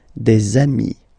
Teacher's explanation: And if you make the liaison, so the link between the two, you will get des amis